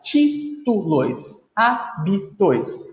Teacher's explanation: nas duas palavras, a sílaba tônica é a terceira de trás para frente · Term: antepenúltima